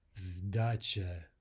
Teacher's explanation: So here we have a voicing of the S to a Z sound.